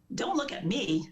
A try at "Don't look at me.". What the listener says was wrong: No, so you're stressing the word me?